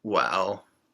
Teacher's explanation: when we express doubt or disagreement well this is similar to the chinese third tone